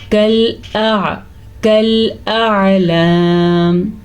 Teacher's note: हमज़ा नरमी से पढ़ा जाएगा और आइन सख्ती से अपने मखरज से पढ़ा जाएगा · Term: हमज़ा और आइन